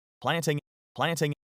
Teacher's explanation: T after N is sometimes dropped. He could have dropped it here. But he didn't. When it's not dropped, it is a true T. · He gives a true T here as part of the NT cluster.